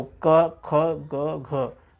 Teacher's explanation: तो इसका सदैव उच्चारण स्थान कहाँ होता है? कंठ होता है।